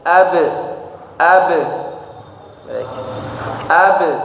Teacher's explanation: huruf qalqalah itu dia tidak memantulnya itu tidak ditambah dengan hamzah di ujung. Jadi bukan ab tapi ab.